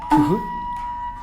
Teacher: The pronunciation method is to purse the lips and immediately after pronouncing ha, when exhaling, pronounce u.